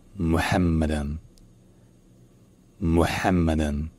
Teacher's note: Et le H n'est pas un simple H arabe, n'est pas un simple H. C'est un H qui est, disons, plus profond, qui est plus fort.